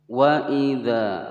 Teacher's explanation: Wa idza, wa pendek, i juga pendek, dza panjang dua ketukan sebab ada alif di sini sebelumnya fathah. Dibaca panjang dua ketukan, hukum bacaan mad tabi'i.